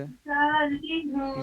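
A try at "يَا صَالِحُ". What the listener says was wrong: या पे मुंह खोलना है। हाँ निकालने की कोशिश कीजिए। या सालिहू।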